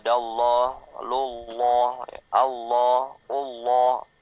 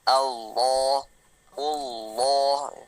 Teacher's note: Yang tebal lohnya bukan au-nya ya. A-nya tipis, lohnya tebal. Maka A-nya senyum maksimal.